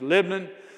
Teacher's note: You got to take all the vowels out and just say the LBNN. That's how we tend to pronounce it, just Lebanon.